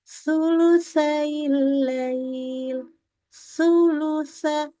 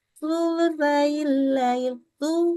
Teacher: dia tidak baca, tidak mengeluarkan ujung lidahnya, melainkan hanya sampai ke roksun